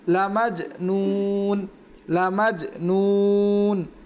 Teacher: ছোটো কলকলা হচ্ছে যেটা শব্দের মধ্যখানে হয়, আর এই দুটো কলকলা শব্দের মধ্যখানে যার কারণে খুব আস্তে করে হবে, আস্তে করে হবে।